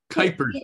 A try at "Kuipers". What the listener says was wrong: Our family pronounces it with a long I, just Kuipers.